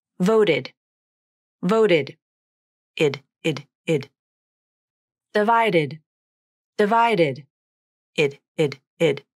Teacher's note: If the last sound of a verb is t or d, like the verbs vote and divide, the ed ending creates its own syllable, the short I vowel and the d consonant. This sounds like id.